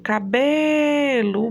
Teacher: é a penúltima sílaba que é tônica, que é forte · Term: paroxítona